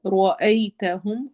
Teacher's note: را کو ہم نے موٹا پڑھنا ہے، ہیوی کرنا ہے